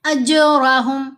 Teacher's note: جیم پر ہم نے کلکلا کیا، جیم پر جو کلکلا ہے یہ کلکلا صغرا ہے کیونکہ جیم لفظ کے اندر آ رہی ہے